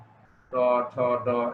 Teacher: ট ঠ ড এগুলি তালুর সামনের দিক থেকে অথবা দন্ত মূলীয় দাঁতের গোড়া থেকে উচ্চারণ